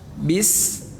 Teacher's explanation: Bis suara datar, rendah aja, sukun, tanda mati.